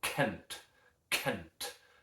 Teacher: It's a glottal plosive, as a matter of fact, because we've got air stored back behind it.